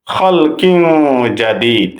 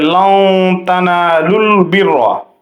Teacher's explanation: তানবিনের পরে ইখফার হরফ আসছে জিম, খলকিন জাদিদ। এখানে গুন্না সহ ইখফা করতে হবে